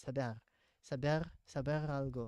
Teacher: In Spanish, you have to add the R, the rolling R.